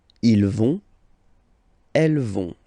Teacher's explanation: remember, final T not pronounced, so you get this ON nasal here